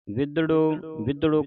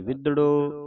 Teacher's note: ਕਸ ਕੇ ਬੋਲਣਾ ਅਧਕ ਲਾ ਕੇ